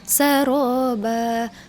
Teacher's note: Nah, ro-nya ditebalkan ya, bukan sara ya, tapi saro. Ba, ketika diwakaf menjadi mad iwad, bacaannya jadi 1 harokat gitu ya.